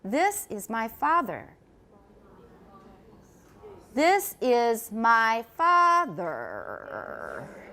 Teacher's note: in most people's speech the highest pitch will occur on the first syllable father and the lowest on the second